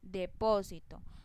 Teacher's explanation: tiene el acento en la antepenúltima sílaba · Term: palabras esdrújulas